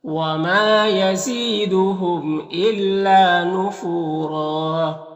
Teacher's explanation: یہاں پر دو زبر ہے، وقف کریں گے تو ایک زبر کے ساتھ الف پڑھیں گے اور را کو پر پڑھیں گے